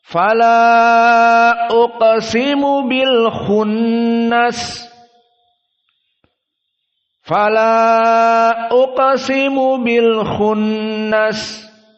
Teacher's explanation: majaiz munfasil maka dibaca Fal uqsimu bilunas Fala uqsimu Bil khunnas syahidnya adalah Fala dalam keadaan tawasud empat harakat